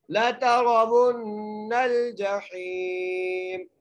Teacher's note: لَتَرَوُنَّ الْجَحِيمَ، جیم کے اوپر زبر ہے، ہا کے ساتھ جائے مدہ ہے، ہا کو ایک الف مدار کھینچ کے پڑھیں گے، میم کو وقف کی صورت میں ساکن کر دیں گے